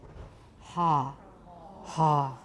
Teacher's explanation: And then finally pull the tongue root back so you get a pharyngeal fricative.